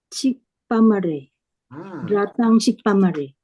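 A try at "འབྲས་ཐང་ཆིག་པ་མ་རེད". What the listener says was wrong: Dratang chikpa mare. That's it.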